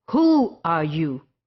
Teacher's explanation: in the second sentence you will notice that i was having more stress on the word who